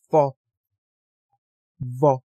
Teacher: 아랫니와 윗니와 아래 입술 사이(순치음)에서 나는 발음